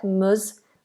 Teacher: just knowing that that S is a Z, mus, voiced S